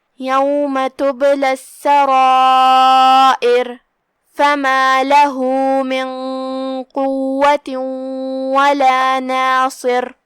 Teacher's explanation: جو کہ ہا پہ یہاں بھی یہ علامہ ہے الٹا پیش، یہاں بھی مد صلہ صغرا ہے، ہم اپنی آواز 2 مد کے برابر لمبی کریں گے